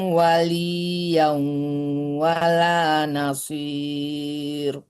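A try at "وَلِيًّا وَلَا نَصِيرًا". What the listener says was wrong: Tak boleh dimatikan karena dia harakat dhamma, harakat fathatain ya, itu namanya mat iwad, panjangkan 2 harakat.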